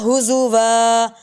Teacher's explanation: ہا کو لمبا کریں گے کیونکہ اس کے اوپر آ رہی ہے کھڑا زبر